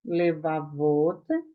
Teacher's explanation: Então, a partir do momento em que eu acrescentar a terminação ot, levavot, a sílaba tônica não mais será o vá, e sim o ot, levavot